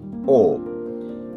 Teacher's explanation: অর্ধসংবৃত এবং গোলাকৃতি ও ঠিক উ এর মত বাইরে না